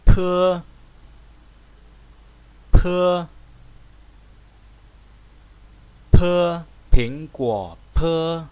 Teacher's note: cần phải đọc nhả hơi ra, nén khí lại và nhả hơi ra. Pơ, bụm môi lại và sau đó cho một luồng khí vào họng và từ trong họng phun ra.